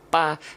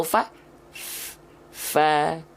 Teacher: kalau huruf P yang nempel itu adalah bibir atas dan bibir bawah